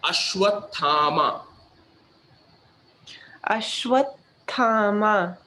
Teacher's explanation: Ashwathama, both long A, last 2 A's.